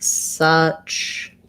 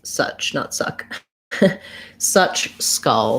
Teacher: my tongue is just in the middle very relaxed in the schwa vowel